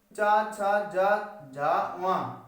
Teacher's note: चा वर्ग चा, छा, जा, झा, वा, इनको जब बोलते हैं तो हमें तालब, हमारी जो जीभ है वो तालु से लगती है